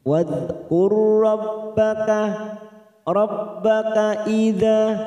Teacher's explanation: Wadhkur, hati-hati ada huruf dal sukun, jangan sampai dipantulkan karena ini bukan qolaqalah, maka kita tahan. Wadhkur, ada huruf ra sukun yang bertemu dengan huruf ra, namanya bacaan idgham mislain. 2 huruf yang sama, yang pertama sukun ya.